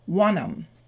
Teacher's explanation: And the N sound is the last consonant we hear. So final consonant followed by a vowel will move to the vowel. So we get wanum.